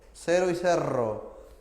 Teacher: La R es vibrante simple y la R vibrante múltiple.